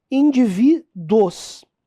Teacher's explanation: Se você pronunciar naturalmente, vai ser um ditongo, porque tá tudo na mesma sílaba.